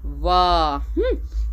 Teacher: तो इस तरह से आपका वाह बोलने पर दांत ओठ से टकरा रहा है।